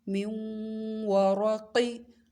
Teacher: واو پہ منہ کو گول کر لینا ہے، را کو بھی موٹا پڑھنا ہے، قاف کو بھی